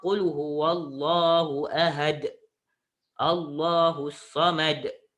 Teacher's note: bila awak sebut huruf dal, dia kena ada lantunan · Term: qalqalah